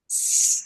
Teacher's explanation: Con la s muy cerrado los dientes una s muy muy sibilante